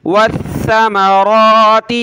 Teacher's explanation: گے واو لام زبر ول حمزہ نون زبر ان والأنفس والثمرات سا پہ زبان نکالی جاتی ہے ٹھیک ہے سین کی طرح نہیں پڑھنا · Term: ثا